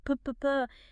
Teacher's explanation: Remember, P, like p, is quiet. It's a whisper sound, unvoiced, just air.